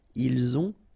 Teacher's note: final T not pronounced, and then we make the liaison